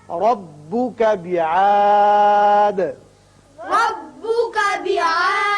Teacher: یہاں وقت کی صورت میں دال ساکن ہو جائے گا اور اس کی صفت قلقلہ ادا کریں گے